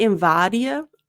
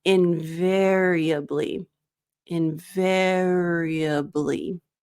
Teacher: So for this one, so it's not invadia. Your mouth doesn't open as much for the A.